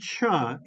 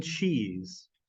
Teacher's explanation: the sound cha as in cheese is actually a combination of the sound ta and the sound Sha and they are crammed together until they are indistinguished inseparable but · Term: affricate